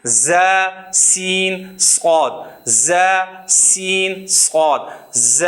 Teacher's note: یہ وہ حروف ہے، وہ گروپ ہے جن کے اندر سیٹی کی آواز بنتی ہے